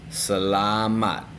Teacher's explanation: And the stress is at the end.